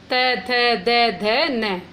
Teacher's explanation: दंत है, और प वर्ग हो गया ओष्ठ है। अब देखो त की लाइन बोलोगे तो जीभ हमारी दांत से ही टकराएगी। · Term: त वर्ग